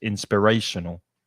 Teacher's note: The middle syllable is the strongest.